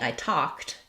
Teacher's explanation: some other words like um like talked, the ed says a t sound. So if I'm just saying I talked, you're going to hear a t sound.